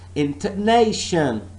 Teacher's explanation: I'm only stressing one part of this word, and I am saying and I'm pronouncing this word as intonation. The stress is on nay.